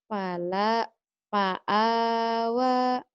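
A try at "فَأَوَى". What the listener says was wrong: Iya, nggak mungkin lam ya. Kalau lam harus nyambung. Ini yang nggak nyambung alif. Fa'awa.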